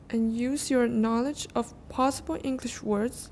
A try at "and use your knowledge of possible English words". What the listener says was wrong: Words. You go up, remember? The tonic is high, and then we go down.